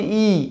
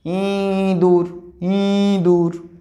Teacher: যখন আমি শুধু ই উচ্চারণ করছি ই, তখন কিন্তু নাকের সাহায্য লাগছে না